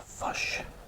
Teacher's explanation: New Zealand might pronounce fish as a fush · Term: accent of New Zealand